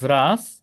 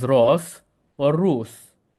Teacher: in dialectical Maltese, it's said as o or u